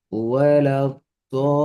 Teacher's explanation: இந்த துவாதை நீட்டணும். 6 அளவுக்கு நீட்டணும்.